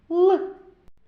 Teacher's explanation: кінчик язика зімкнувся з верхніми зубками цей звук вимовляється з перешкодою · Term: зву к л